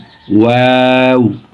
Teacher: এর উচ্চারণ দুই ঠোঁট গোল করিয়ে ওয়াও।